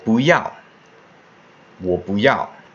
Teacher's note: following fourth tone but instead of saying boo yeah it's yeah so the boo becomes a second tone